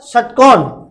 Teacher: ऋतु रसना मूर्धा, ये मूर्धन्य वर्ण है